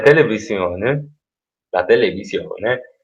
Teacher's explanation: L'accento primario, cioè quello più importante, sulla O, come possiamo vedere dalla slide. L'accento secondario, che è diciamo, appunto un accento secondario, cade sulla E.